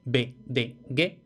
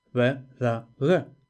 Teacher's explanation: Es decir, cada uno de los tres fonemas se puede pronunciar de dos formas diferentes. Oclusivo, vamos a decir fuerte, B, D, G. Aproximantes, vamos a decir más suaves, V, D, G. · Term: alófonos